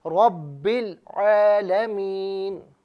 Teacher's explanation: यहाँ रॉ पर ज़बर है, रॉ को पुर करके पढ़िए।